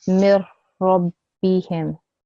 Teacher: This meme and the ra I need to join together, and whilst joining, I have to make sure that I omit the noon sound. That means I must not produce any noon sound. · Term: complete assimilation